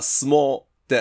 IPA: s(u)moː